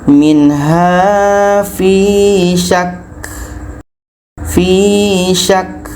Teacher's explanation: Setelah kita tahan, keluarkan anginnya. Ada bunyi k. Karena sifat ka adalah hamas, berangin.